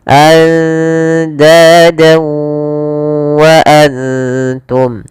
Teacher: Lafal dawa di sini kembali lagi ada bacaan idgham bi gunnah, yaitu ditandai dengan fathatain bertemu dengan huruf waw. Maka cara membacanya masukkan fathatainnya ke huruf waw dan ditahan.